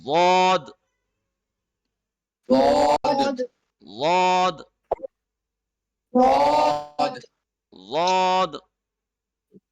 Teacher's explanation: یہ دیکھیے یہ ڈائیگرام، یہ اوپر کے دانت ہیں. زبان کی جو لیفٹ سائیڈ ہے منہ کی چھت کی لیفٹ سائیڈ کے ساتھ ٹچ ہو رہی ہے